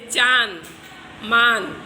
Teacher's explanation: जिन वर्णों के उच्चारण करने में हवा नाक और मुख दोनों से निकलती है उन्हें अनुशासिक कहते हैं।